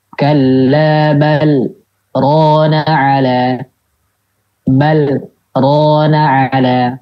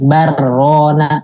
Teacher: Misalkan ya, huruf lamnya lam sukun. Depannya huruf ro, harusnya kan idgham ya. Tapi ini dibacanya idhar.